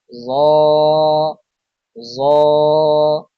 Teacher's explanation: জিহ্বার আগা সামনের উপরের দুই দাঁতের আগার সঙ্গে লাগিয়ে উচ্চারিত হয় জ